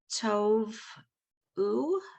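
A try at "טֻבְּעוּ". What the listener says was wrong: So check out the vowel under that tet. It's a oo. It's tubu. Tubu. It's just tube.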